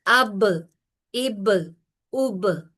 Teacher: बा जो है उसमें कलकला भी है और उसमें और भी कुछ स्ट्रांग सिफात है और यह दोनों होठों को मिलाने से अदा होता है। · کلکلا ایک اسٹرانگ صفت ہے، اور وہ یہ با میں پائی جاتی ہے · یعنی کہ بڑی سختی سے ہونٹ آپس میں ملتے ہیں، اور اس میں کیونکہ ہونٹ آپس میں کافی سختی سے ملتے ہیں، اس لیے اس میں کلکلا بھی ہوتا ہے